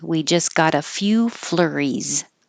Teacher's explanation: the S sounds like a z